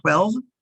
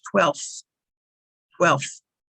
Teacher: if we have the number it's 12 with a v if we say the 12th in line it's with the f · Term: v sound